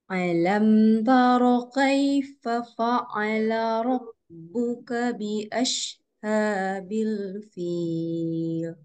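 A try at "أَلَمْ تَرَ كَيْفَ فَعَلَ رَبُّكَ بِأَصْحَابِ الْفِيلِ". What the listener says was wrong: Baik, ayat pertama itu dimulai dengan huruf hamzah. Jadi bukan a. Kalau a kayak suaranya ada a seperti itu huruf ain namanya.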